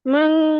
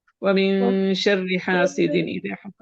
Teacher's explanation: آپ بولے نون ساکن کے بعد شین ہے. شین اخفا کے حروف میں سے ہے، اس لیے نون کا یہاں پر اخفا کریں گے غنہ کے ساتھ